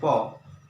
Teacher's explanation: पूरा बल होंठों के ऊपर पड़ रहा है और वही उसका उच्चारण स्थान होगा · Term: ओष्ठ